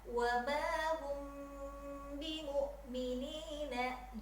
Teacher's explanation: Jadi mim sukunnya tahan 3 ketukan.